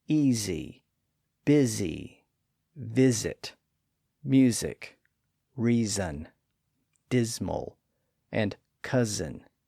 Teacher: we see how those vowels on each side tend to produce voicing all the way through the middle of the word. Again, we also see how the final S in some of these words became a voiced Z sound when a verbal suffix was added.